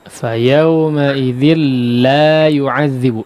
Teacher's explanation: La-nya 2 harakat dipanjangkan, Pak ya